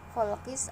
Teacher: alif lamnya tidak jelas, yang kedengaran itu huruf samsiahnya adalah sin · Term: alif lam samsiah